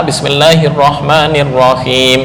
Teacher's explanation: lafal Allah dipanjangkan, Ar-Rahman dipanjangkan, kemudian Ar-Rahim him panjang